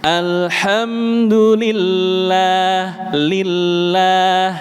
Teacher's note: kalau kita mengucapkan lam yang tipis, nggih, Pak. Ujung lidahnya rileks. Alhamdulillah lillah rileks.